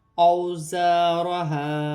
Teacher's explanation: را ساکن ہے، را کو ہا کی حرکت کے ساتھ ملا کر پڑھا جائے گا، اور را ساکن سے پہلے زبر ہے تو را موٹی پڑھی جائے گی۔ اوزارہا، واو ساکن سے پہلے زبر ہے تو واو لین بنے گی، اسے کھینچا نہیں جائے گا۔ الف سے پہلے زبر ہے تو الف مادہ بن رہی ہے، اسے ایک الف کی مقدار کھینچ کر پڑھا جائے گا۔